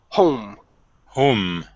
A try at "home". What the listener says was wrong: Yeah, so you had said hum, okay, instead of